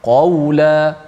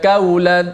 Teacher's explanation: qaf sifatnya dengan kuat, sifat yang kita kata tinggi, isti'la, tebal, qa. Maka kita bila berjumpa secara dekat, kena hati-hati lebih sikit supaya dua-dua tak jadi kaf ataupun dua-dua jadi qaf.